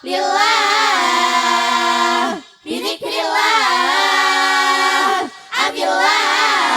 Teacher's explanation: tarqiq apabila lam jalalah didahului kasrah